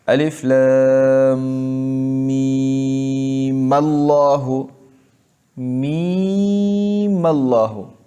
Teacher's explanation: میم کو لفظ اللہ کے ساتھ ملایا اور جو حمزہ عارضی تھا اس کو ہٹایا